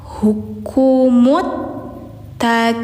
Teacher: Alif lamnya samar langsung ke ta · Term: syamsiah